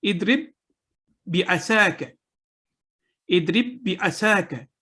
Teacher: مثلا با کو با کے ساتھ ملائیں، اضرب ایک لفظ ہے، بعصاک دوسرا لفظ ہے، تو ان دونوں الفاظ کو جب ہم ملائیں گے تو با کے ساتھ مل جائے گا، ساکن با ختم ہو جائے گا، صرف جو مشدد با ہے اس کو پڑھیں گے۔ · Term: ادغام المتماثلین